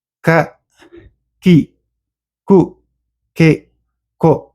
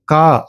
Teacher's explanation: உயிர் குறில் உயிர்மெய் குறில் இதை சொல்றது ஒரு மாத்திரை அளவு அதாவது ஒரு மாத்திரை அளவுக்குள்ள இந்த வார்த்தையை வந்து இந்த எழுத்தை வந்து சொல்லி முடிக்கணும். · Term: குறில் எழுத்து